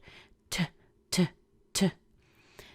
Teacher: The T has a little extra air coming out with it.